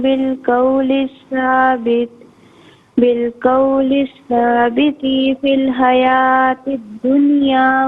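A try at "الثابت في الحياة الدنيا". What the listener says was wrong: جزاک اللہ خیر۔ ثابتی نہیں، ثابتی فی الحیات الدنیا، تا کو بغیر کھینچے پڑھیں گے۔ السلام علیکم۔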